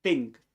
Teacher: But the second one is think. No vibration in the vocal folds